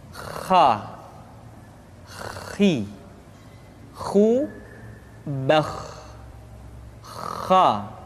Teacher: pengucapan huruf kha persis terdengar seperti orang yang tidur dalam keadaan mengorok.